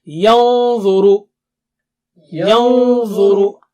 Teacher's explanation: when you keep your tongue tip close to the makhraj of dha, your Noon Sakina will also become thick and high.